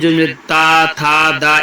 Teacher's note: जिनका उच्चारण ऊपर के दांतो में जीभ लगने से होता है